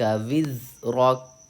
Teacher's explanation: وزرک میں زا پہ سختی کر کے پڑھنا ہے اور کاف کو ہم ساکن کریں گے